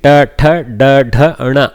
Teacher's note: ta, da, dha, all of them have a little explosion in the mouth. Okay, basically the tongue rolls back and slaps, ta, da, dha.